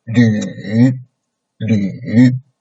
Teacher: the beginning point is rather low, and then make it lower down, a little bit lower down, and then a little bit up, a little bit up. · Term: third tone